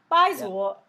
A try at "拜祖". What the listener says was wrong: 祖, not zua. 祖. Almost like you're saying pig in Chinese. Like zhu. And then the o comes out. 拜祖.